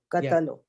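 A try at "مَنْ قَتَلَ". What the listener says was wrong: Lam has a fatha, man katala, who killed.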